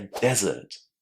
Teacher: Stress on the first syllable, and the vowels are much shorter inside this word.